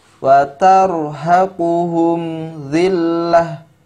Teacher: huruf mimnya dibaca jelas, ya, tidak disamarkan atau tidak didengungkan, tapi dibaca dengan jelas. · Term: izhar syafawi